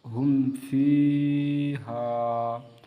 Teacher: یہاں پر بھی اظہار شفوی ہوگا کیونکہ میم ساکن کے بعد فا آ رہے ہیں۔